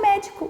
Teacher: a sílaba tônica é a antepenúltima e a classificação é proparoxítona